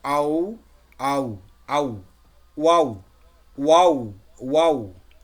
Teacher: দুই ঠোঁট গোল করে মধ্যখান ফাঁক রেখে উচ্চারিত হবে।